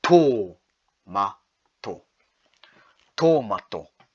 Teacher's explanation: Next we have another macron, so you want to elongate the O sound